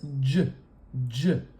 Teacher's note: it sort of is J J we call this an africat we stop the air in our mouth and then explode it out with some turbulence